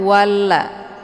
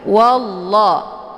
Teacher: wallah ini juga lafaz Allah yang dibaca tebal yaitu wallah karena sebelum lafaz Allah berharakat fathah yaitu wa Jadi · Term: bacaan tafkhim